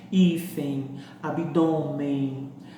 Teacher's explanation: são todas palavras em que a sílaba mais forte é a penúltima e elas são terminadas em X e N. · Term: paroxítonas